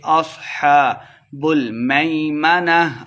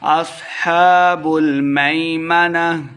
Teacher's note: آخر پہ ہا کی آواز آئے گی، لمبا بالکل نہیں کرنا